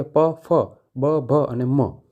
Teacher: આપણા બંને હોઠ ભેગા થશે ને ત્યારે જ એને આપણે પરફેક્ટ રીતે ઉચ્ચાર કરી શકશું, નહીંતર ઉચ્ચાર નહીં કરી શકીએ. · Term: ઓષ્ઠ્ય